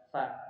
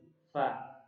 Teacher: bibir, bagian bibir yang basah ini dia bertemu dengan ujung gigi seri atas ya, fa, dan dia keluar angin, desisan, fa ya. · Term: desisan angin